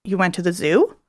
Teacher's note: We know that's a question because of that pitch change